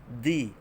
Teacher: Huruf dal ni hujung lidah sentuh pada pangkal gigi atas. Di, jangan pada gusi.